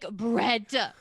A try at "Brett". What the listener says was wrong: Also, the way that you say my name is so funny. It's truly so funny. You add syllables.